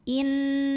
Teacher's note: alif lam ini tidak perlu dibaca. Jadi langsung masuk ke huruf lam berikutnya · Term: alif lam syamsiyah